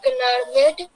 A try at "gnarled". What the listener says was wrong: Nal. silent. It is nald. We don't pronounce the G here.